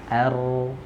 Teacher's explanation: huruf ro ujung lidahnya bergetar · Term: takrir